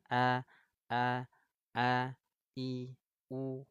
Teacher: Hamzah itu keluarnya di tenggorokan bawah, ya, tepatnya di pita suara.